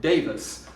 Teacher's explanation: I stress the first syllable. I say Davis.